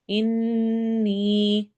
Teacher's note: میں قلقلہ یعنی آواز ڈبل ہوگی، ایکو ساؤنڈ ہوگی، سبحانک، انی، ان نون میں غنہ کرنا ہے اور ساتھ یا مدہ یعنی 2 حرکہ لمبا